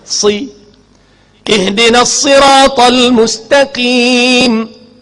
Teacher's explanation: Mahmus dibaca dengan berangin. Angin kot mulut nah. Angin keluar kot lain batas semayang.